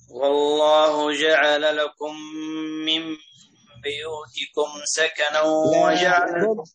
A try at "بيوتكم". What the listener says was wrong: ضم الباء هنا، نحن نقرأ بضم الباء، غيره الكسائي والبصري وغيرهما يقرأ بكسر بيو، لا احنا نقول بو بضم الشفتين. والله جعل لكم من بو.